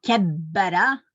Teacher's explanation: Kui see bä peal on siis see shedda, ehk siis me hääldame nagu 2 B-d. Näiteks eesti keeles ütleme rattaga, me kirjutame 2 T-d, aga araabia keeles pannakse see shedda peale, mis tähendab, et loe seda intensiivsemalt. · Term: kahekordne kaashäälik